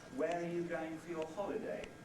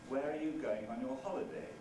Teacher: a high fall simply sounds polite and interested